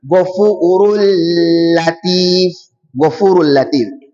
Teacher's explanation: that tanwin we are going to insert it inside the lam, so it will now be Ghafurul Latif, Ghafurul Latif. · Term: idgham